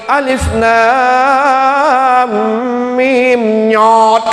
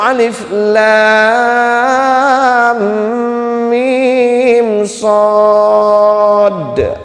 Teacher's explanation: Yang benar adalah alif lam mim shad. Huruf shad asli harus ada qalqalahnya.